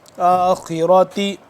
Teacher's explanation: خا بھی موٹا پڑا جائے گا اور را بھی ، آخرۃ حسنۃ، حسنۃ وقنا، وقنا عذاب النار، عذاب النار، عین